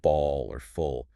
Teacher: The tip of your tongue actually drops down and the back of your tongue raises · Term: dark L